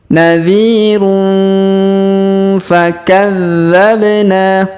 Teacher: Kemudian huruf tanwin un bertemu dengan fa maka kita dengungkan dan kita samarkan. Kita dengungkan 2-3 harokat.